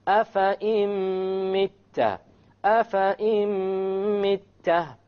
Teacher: So we drop the noon and we put the hamza along with the meme, and that is our idgham with ghunna.